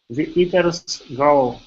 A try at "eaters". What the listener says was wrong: Okay, so here you're saying eaters. Okay, you're rolling your R. Watch your tongue on the word eaters. The eaters grow.